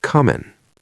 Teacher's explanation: I shoulda told him that I was comin'. The G falls off the end of coming.